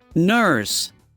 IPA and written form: nɝs (nurse)